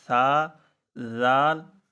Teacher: اسی طرح آگے زال ہے، جو سا کا مخرج ہے وہی زال کا مخرج ہے، یعنی اوپر والے دانتوں کی کناروں سے زبان لگے گی